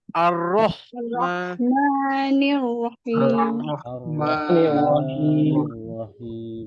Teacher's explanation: suara terlepas, nafas pun terlepas. Suara ada bunyi H tu. Nafas pun terkeluar angin dekat tangan tu.